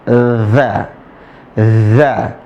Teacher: huruf dza tempat keluarnya ujung lisan ketemu dengan ujung gigi seri atas